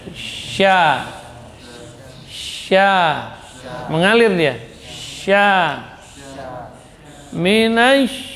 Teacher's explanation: Sya huruf yang keluar dari tengah lidah. Ya, dorongannya dari tengah. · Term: huruf sya